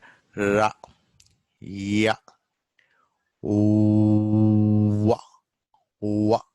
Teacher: So what happens? One organ, one speech organ comes close to other speech organ, but they never touch. There is a gap and air escapes close to another without actually touching it. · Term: approximants